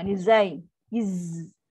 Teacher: Macam lebah tu. Dia ada sifat sofi yang bunyi macam lebah tu kan.